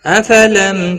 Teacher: افلم میم ساکن کے بعد تا ہے، اظہار شفوی ہوگا، گنہ نہیں کریں گے۔ کو نو دونوں واو مدہ ہیں، ایک ایک الف کے برابر کھینچ کر پڑھیں گے۔ تا عین ساکن کو ہلانا نہیں۔